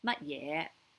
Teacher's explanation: it is a high tone for the 乜, and then 嘢 is a low rising